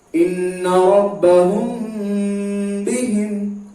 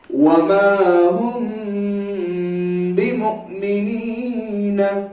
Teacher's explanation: کیوں ہوگا اخفاء شفوی کا قاعدہ؟ کیونکہ میم ساکن کے بعد با آیا تو یہاں پر غنہ کے ساتھ اخفاء ہوگا